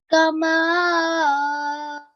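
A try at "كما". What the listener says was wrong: So even here, I could notice that you were separating this alif and then pronouncing this alif separately. So again, kama, not kama.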